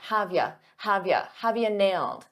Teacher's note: For pronunciation, I said have you, but a lot of native speakers reduce you to just a ya